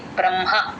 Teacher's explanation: వస్తుంది. ఆ బంద రకారం ఉంది కాబట్టి ముందు అక్షరానికి జాయిన్ చేసుకొని చెప్తాము హ కింద మ వత్తు ఎప్పుడు వచ్చినా మ ఫస్ట్ చెప్పి తర్వాత హ చెప్తాం